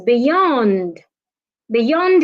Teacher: beyond is a preposition you need to stress the second syllable